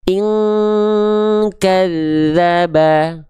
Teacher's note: suaranya total masuk ke dalam hidung. Sehingga dia dengungannya mendekati eng. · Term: samar dengung